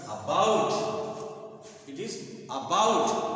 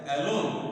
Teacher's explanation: the stress इज on second syllable